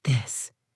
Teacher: For the word this, the sound is voiced. You should feel a small vibration in your throat.